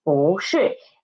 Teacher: because it is before the fourth tone syllable, 是, that's why 不 changed its pronunciation, changed its tone into second tone. So it becomes 不 是.